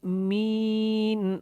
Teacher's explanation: می کو لمبا کرنا ہے کیونکہ یہ مدہ ہے، مین وقف میں تھوڑا لمبا ہوگا.